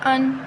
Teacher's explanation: حمزہ تا زبر ات، تا کو ہلائیں گے نہیں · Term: جزم